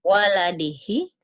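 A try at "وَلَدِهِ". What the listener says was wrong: hi-nya kan panjang. Ayo.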